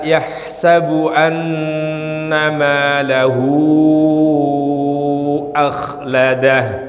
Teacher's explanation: Di mana ada huruf ha, baik bacaannya kasroh semacam ini atau dhammah semacam ini, lalu kemudian bertemu dengan hamzah, maka dia harus dibaca panjang, yang disebut dengan bacaan mad silah tawilah.